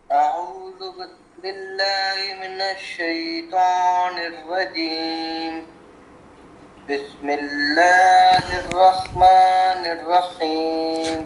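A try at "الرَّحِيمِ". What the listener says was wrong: ہاں ہا پہ رکیں گے نہیں کیونکہ شد نہیں ہے نا، ہا کو بالکل باریکی ساتھ. رحیم.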